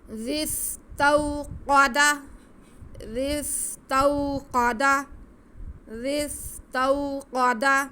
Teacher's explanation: قاف حروف مستعلیہ میں سے، اسے ہم موٹا کر کے پڑھیں گے